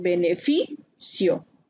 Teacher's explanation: la sílaba que tiene acento prosódico es fi